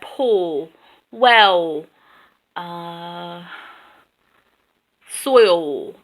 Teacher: the OL sound tends to become vowels so you have pull well soil there's there's almost no love · the ul sound tends to become vowels.